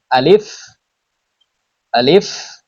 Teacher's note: মুখের খালি জায়গা হইতে উচ্চারিত হয় আলিফ। দেখেন মুখটা একটু হালকা হা করে আলিফ আলিফ।